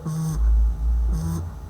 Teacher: v, v, which is voiced. Labiodental, fricative